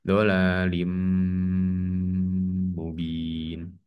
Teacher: jadi dibaca tanwin kasrahnya masuk ke huruf mim dengan dengung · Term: idgom bunah